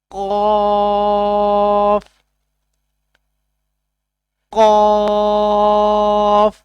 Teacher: زبان کی جڑ اوپر لگے تو قاف ادا ہوتا ہے